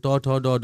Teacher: ট ঠ ড ড মূর্ধন্য এগুলো মূর্ধা লাগে। এগুলো মূর্ধন্য ধ্বনি।